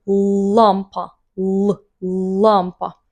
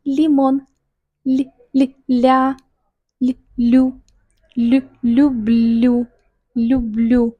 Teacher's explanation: наш язык напряжен, и наш язык, это трудно увидеть, наш язык подходит к зубам, к верхним зубам, он за зубами, он не высоко, где альвеолы, он за нашими верхними зубами, лампа, ла, ло. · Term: Твердый Л